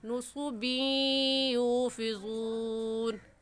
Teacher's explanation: 2 مرتبہ پڑھا جائے تو اسے ادغام کہتے ہیں، جیسا کہ یا دیکھنے میں ایک ہے اور پڑھنے میں 2 مرتبہ پڑھا جائے گا، ایک مرتبہ با کے ساتھ ملا کر دوسری مرتبہ خود